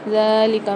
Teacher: من بعدی ذالک میں دال کے اوپر کھڑا زبر آ رہا ہے، اس کو ایک الف مقدار کھینچ کے پڑھیں گے